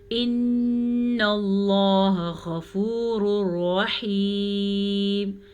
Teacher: نون کا غنہ ادا کرنا ہے، نون پہ شد کی وجہ سے · دونوں کو آپس میں ملا دیتے ہیں اور بغیر غنے کے ملاتے ہیں، اسے کہتے ہیں ادغام بلا غنہ. · لفظ اللہ کو پر پڑھنا ہے، لفظ اللہ سے پہلے زبر کی وجہ سے · غین کو پر پڑھیں گے، غین تو ہمیشہ ہی پر پڑھا جاتا ہے، اور تنوین کے بعد لر میں سے را آیا ہوا ہے تو اس لیے یہ ادغام بالغنہ کا الٹ یعنی کہ ادغام بلا غنہ ہوگا.